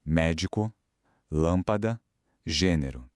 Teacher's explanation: São aquelas palavras em que a sílaba mais forte é a antipenúltima, ou seja, a terceira, contando de trás paraa frente. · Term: proparoxítonas